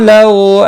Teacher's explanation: लव वावलीन है, थोड़ा नरमी के साथ खींच कर अदा करेंगे।